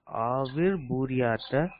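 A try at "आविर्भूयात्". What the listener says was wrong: பூரியாத்த இல்ல, ஆவிர் பூயாத்த.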